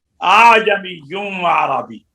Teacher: یہ الف آدھا حمزہ کے مخرج سے اور آدھا عین کے مخرج سے، نہ اس میں جھٹکا ہوگا اور نہ الف کی آواز ہوگی